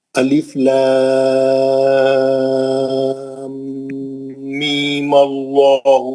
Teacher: دونوں صورتوں میں میم پہ غنہ رہنا · غنہ کر کے می پڑھنا ہے. می 2 حرکت، اس کے بعد زبر سے اللہ کو ملانا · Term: میم کا غنہ